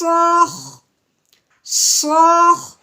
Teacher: خا کی آواز کو ہم نے رگڑتے ہوئے نکالنا ہے